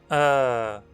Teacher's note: A língua fica na mesma altura que em [ɛ] ou [ɔ] mas equilibrada, e os lábios se arredondam. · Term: Vogal central semiaberta arredondada